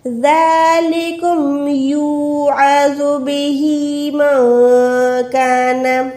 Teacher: ذَلِكُمْ يُوعَظُ بِهِ مَنْ كَانَ، عین حلق کے درمیان سے ہے، زو موٹا ہے، بےہی، ہے کو لمبا کر رہی ہوں کھڑی زیر کی وجہ سے · نون ساکن کے بعد کاف ہے، اس کو چھپا رہی ہوں، اکفا کر رہی ہوں